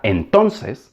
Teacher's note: la sílaba prominente ton se escucha más fuerte y por lo tanto se le da un mayor valor. En consecuencia, en habla rápida, los hablantes suelen pronunciar tons.